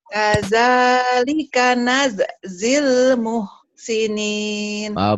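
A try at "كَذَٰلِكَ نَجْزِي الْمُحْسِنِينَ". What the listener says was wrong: Belum, kerasnya belum ketemu tuh. Najzil. Kadzalika najzil muhsinin. Agak zil. Najzil.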